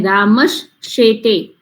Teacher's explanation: દંત્ય સકારની જગ્યાએ તાલવ્ય સકાર થઈ જશે